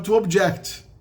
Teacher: Aí a sílaba tônica do verbo sempre fica no final.